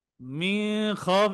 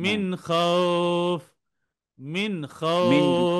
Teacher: নাকে কোনো গুন্না হবে না, স্পষ্ট হয়ে যায়।